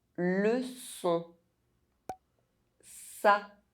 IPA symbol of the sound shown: s